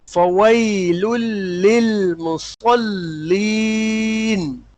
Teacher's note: مصلین کے بعد جو لام ہے مصلین میں آخر کا لام جو لاسٹ لام اس کو باریک رکھیے گا